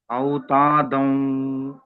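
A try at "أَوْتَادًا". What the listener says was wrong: ఇంకా మీమ శబ్దమే వస్తుంది దాల్ఫత సుకున్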